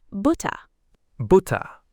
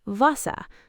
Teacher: The floating R. So Germans just gently release the R at the end of words and it dissolves into an ah sound.